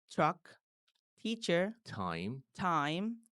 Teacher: এই সকল ওয়ার্ডে ঠি এর উচ্চারণ ফি এর মতো হালকা এবং মুখ থেকে বেশি বাতাস বের হবে